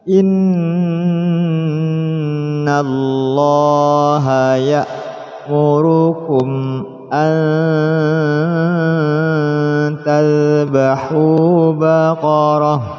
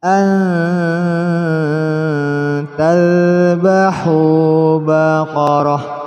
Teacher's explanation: nun mati bertemu tak, masukkan suara nun mati pada tak disertai dengung. An tadhbahu baqarah, dhammah berhadapan dengan waw sukun, satu alif.